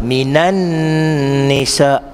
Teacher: nun yang ada tanda syaddah tu dua harakat wajibal ghunnah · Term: wajibul ghunnah